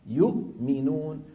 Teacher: الهمزه الساكنه مع الميم الهمزه من الحلق والميم من الشفتين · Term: الحرفان المتباعدان